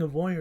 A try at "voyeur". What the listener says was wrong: Sounds like you're saying a lawyer. You're a lawyer.